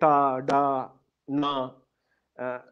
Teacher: what are called retroflex consonants, which are sounds like ta, da, na, which are typically Dravidian sounds or pre-Aryan language sounds in the Indian subcontinent.